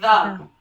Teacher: ہماری جو زبان کی ٹپ ہے یہ لگے گی سامنے والے جو بڑے 2 دانت ہیں اوپر والے ان کے ساتھ